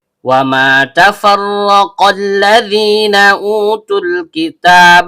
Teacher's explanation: Ra, ujung lidah bertemu dengan langit-langit bagian belakang. Karena ra-nya berharakat fathah, maka hukum bacaannya tebal atau tafkhim.